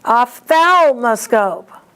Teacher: Ophthalmoscope, the accent is on THAL.